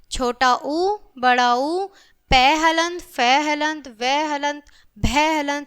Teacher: इनका जो उच्चारण स्थान है वो है ओष्ठ। और इनका वर्ण का नाम होगा बच्चों ओष्ट्य।